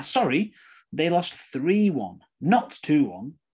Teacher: the apology sorry the correct information three one the negative and the mistake not two one all those are usually stressed